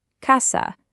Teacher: Both A's have that exact same ah sound.